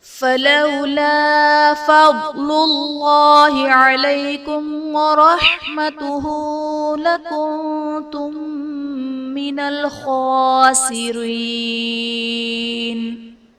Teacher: فضل اللہ میں اسم جلالت اللہ عز و جل کے لام سے پہلے حرف پر پیش ہے تو یہاں پر اسم جلالت اللہ عز و جل کے لام کو پر یعنی موٹا پڑھا جائے گا۔